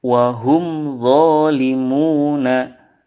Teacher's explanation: mim sukun nya dibaca jelas-jelas disini tanpa ada embel-embel dengung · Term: Izhar Syafawi